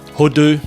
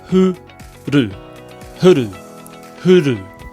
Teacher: often the R gets dropped and it gets replaced with a D, hodu. So to get that first bit right, hu-ru, huru, huru.